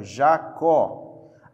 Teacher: a última sílaba é a tônica então essa palavra é oxítona